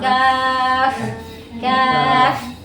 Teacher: Untuk sifat-sifat hams, kuatkan hawa, udara. Dorong kaf.